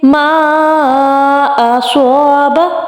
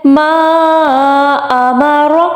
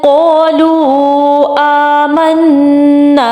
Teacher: 3 to 4 الف کے equal مد کو کریں گے لمبا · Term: مد جائز